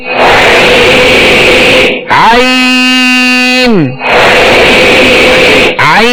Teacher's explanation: आन को वस्ते हलक से अदा करेंगे